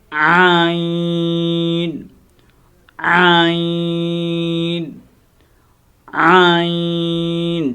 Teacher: یہ حرف عین گلے سے ادا ہوتا ہے جب تھوڑی گلے کے اوپر دباؤ دیا جائے، زور دیا جائے